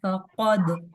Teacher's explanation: काफ को मोटा रखना है, दाल के ऊपर कलकला होगा